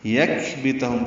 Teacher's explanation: کاف ساکن ہے، اس پہ ہمس ہوگا، کاف باریک پڑھا جائے گا